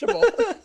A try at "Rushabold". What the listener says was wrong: Rushabold. It needs the rolled R in the front of it.